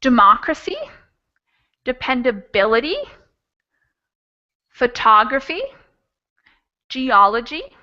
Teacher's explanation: stress on anti-penultimate syllable anti-penultimate third from the end and this will work for words that end in c y